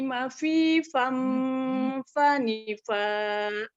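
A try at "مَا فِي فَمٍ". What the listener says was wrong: Maaf Ibu, bukan mafifam ya, jangan jadi mim. Mafifam.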